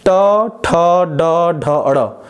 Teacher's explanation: जब आप ट, ठ, ड, ढ, अड़ बोल रहे हैं तो आपकी जीभ जाके मूर्धा के पास स्पर्श कर रही है। मूर्धा वही खुरदरा वाला भाग जो 3-4 लाइनें हैं आपके मुंह के अंदर दांत से ऊपर। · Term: मूर्धन्य